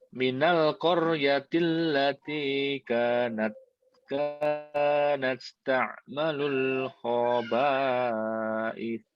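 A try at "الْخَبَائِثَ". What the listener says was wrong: Kha-nya kurang di ini ya, kurang ditekan. Khaba'ith, ta'malul khaba'ith.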